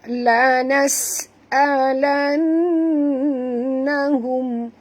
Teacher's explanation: Nun bersabdu wajib dengung, wajib balguna, dengung dua harakat